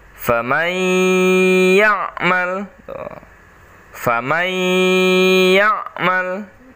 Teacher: nun sukun masuk ke dalam huruf ya. Jadi suara N-nya hilang, melebur ya, masuk ke dalam huruf ya · Famai, didengungkan, ditahan.